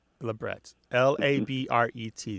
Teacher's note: Most piercers will insist that the word is pronounced labret with a T at the end, the hard T. But some other people will say, well, the word came through France, so it's labret.